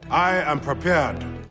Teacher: he's actually got a little bit of a retracted a pulled back tongue root